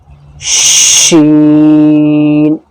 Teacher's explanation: شین جب پڑھا جاتا ہے تو زبان کا جو بیچ ہے اوپر والے تالوں میں وہ چپک جاتا ہے